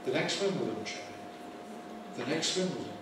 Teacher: removing the t at the end of words like next when the next word begins with a consonant then we tend to omit it and w counts as a constant so next with next